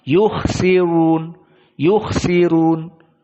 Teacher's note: Adapun ra sebelumnya kasrah, di mana sin kasrah, maka di qiraah Wars dalam keadaan tarkik.